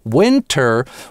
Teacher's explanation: winter у большинства американцев звучит с [t] и редко у кого сливается с winner